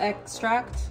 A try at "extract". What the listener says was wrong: You said egg. That's an accent.